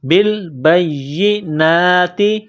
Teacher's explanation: با کو یا کے ساتھ ملانا ہے، یا کے اوپر تشدید ہے تو یا میں سختی کرنی ہے، یا کو دبانا ہے · نون کے اوپر کڑا زبر ہے، 1 الف کے لمٹ میں کھینچنا ہے